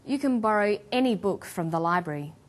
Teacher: when the word any is stressed this tells us that we're talking about an unrestricted quantity or unlimited choice